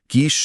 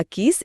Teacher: स बोलते समय हवा दांतों के बीच से एक सीटी जैसी आवाज के साथ निकलती है, इसे दंत्य ध्वनि कहते हैं।